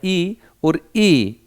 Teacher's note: इनका उच्चारण स्थान जो है वो तालु होता है, अर्थात ये कोमल उससे बोली जाती हैं।